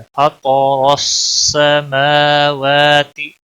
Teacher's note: انی وجہت وجہی للذی فطر السماوات، فطر تو کو پور پڑھیں گے یعنی موٹا پڑھیں گے، را کے اوپر بھی زبر ہے، اس کو بھی موٹا پڑھیں گے، را سین کے ساتھ ملے گا۔ فطر السماوات، میم اور واو کے اوپر دونوں کے اوپر کھڑی زبر ہے، دونوں کو ایک ایک الف کے برابر کھینچ کر پڑھیں گے۔